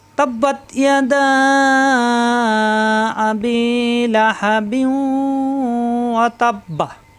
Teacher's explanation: এই বি মিলবে ওয়ার সাথে, এরপর গুণ্য হবে বিউ, ঈদগামে বা গুণ্য।